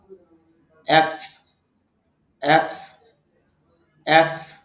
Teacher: এফ যখন আমরা উচ্চারণ করব নিচের ঠোঁটের পেট উপরের দাঁতের আগার সঙ্গে লাগাবো।